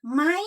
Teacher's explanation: we change the tone and we say it in high tone